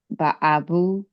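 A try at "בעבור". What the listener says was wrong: with an R on the end.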